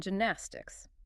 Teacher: But it is actually a soft J sound, created much closer to the front of the palate.